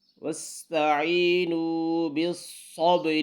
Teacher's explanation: صاد اور با کے ساتھ ملانا ہے اور با پر کلکلا آواز کو ہلانا ہے